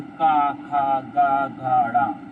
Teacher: इनका उच्चारण स्थान कहाँ से होता है, हमारा कंठ से होता है